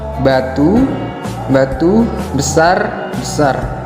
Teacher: Pelafalan bibir bawah dan atas rapat, udara dari paru-paru tertahan sebelum kerapatan dilepaskan.